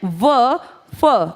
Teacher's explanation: बहुत सारे हैं ज फ लेकिन यहां मेन मैं बात करूंगी फ की ये दंतोष्ठ हैं। इनको बोलते टाइम आप दांत और होंठ का सहारा लेते हैं। · दांत और होंठ का सहारा लेकर जो बोले जाते हैं इन्हें कहा जाता है दंतोष्ठ। व और फ और दोनों में निचले होठ का आप सहारा लेते हैं जब ये साउंड क्रिएट करते हैं। दांत और ओष्ठ से बोले जाने वाले सिर्फ दो हैं।